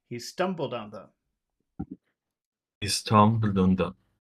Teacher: there's only one big sound in there and it's stum the rest are very small